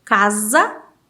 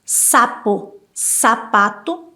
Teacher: casa é som de Z, mas sapo, sapato é som de S